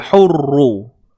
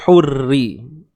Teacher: Kalau pangkal lidah kita naik, tebal lah bunyi dia, hurru. Tapi bila pangkal lidah kita ke bawah, pangkal lidah, jatuh, hurri.